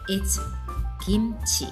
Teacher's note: when you say kimchi, make sure you don't say it with a strong K sound